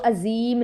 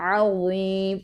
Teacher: دونوں دانتوں کے درمیان زبان کا کنارہ آپ نے لگانا ہے